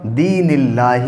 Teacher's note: دوسرا دین اللہ، یہاں اللہ کا لام یہ ہے اور اس سے پہلے نون کے نیچے زیر ہے، اس لیے یہ اللہ کا لام باریک پڑھا جائے گا